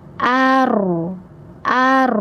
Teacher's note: suara roya yang tebal, jadi jangan membuatnya menjadi ar tetapi isi rongga mulut.